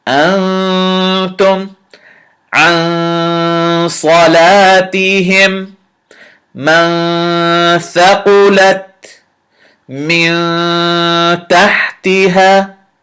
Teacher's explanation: I hid the noon in my nose a little bit. This is called ikhfa. This is a preview of noon sakin, examples of noon sakin when it's in ikhfa mode.